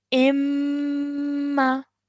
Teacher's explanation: And we know that whenever there is a mim mushaddad, we have to make a gunna sound, which we have to hold in our nose for 2 seconds